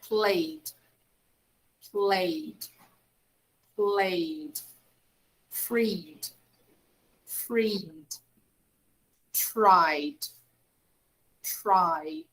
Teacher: play play ends in a vowel sound a so for these when i put the final ed i simply pronounce the sound of d only